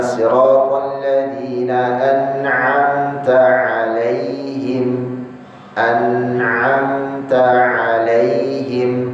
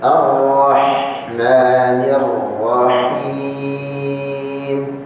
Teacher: Ain posisinya sedikit agak ke dalam.